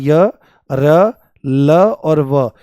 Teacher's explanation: ये सभी के सभी आपके सघोष हैं। सघोष मतलब इनके बोलने में कंपन होता है स्वरों की तरह से ही और ये सभी के सभी आपके अल्पप्राण हैं। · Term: अंतस्थ व्यंजन